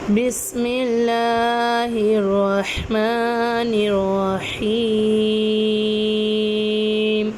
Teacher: ادھر ہم نے را کو پر پڑھا کیونکہ را کے اوپر زبر ہے، اور ادھر ہم اس میں جلالت اللہ عز و جل والے لام کو باریک پڑھیں گے، کیونکہ اس میں جلالت اللہ عز و جل والے لام سے پہلے اگر زیر ہو تو اس میں جلالت اللہ عز و جل والے لام کو باریک پڑھتے ہیں۔